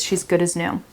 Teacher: But when we say it, as gets reduced and it becomes is. She's good as new.